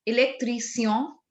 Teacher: It's not électricien. There is no sh sound here. It's sien.